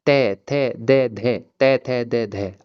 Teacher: जब हम तै वर्ग का जो प्रोनेंसिएशन करेंगे, उच्चारण करेंगे वो हमारे दा हमारी जो जीभ है ना वो दांतों से टच होगी।